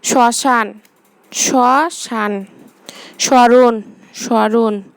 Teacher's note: ম ফলার উচ্চারণ পদের প্রথমে ম ফলা থাকলে যে বর্ণের উচ্চারণে কিছুটা ঝোঁক পড়ে এবং সামান্য নাসিকস্বর হয়